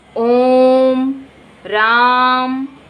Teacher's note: इसमें 3 गुना समय लगता है, इसलिए इसको त्रिमात्रिक स्वर भी कहते हैं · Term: फ्लुत स्वर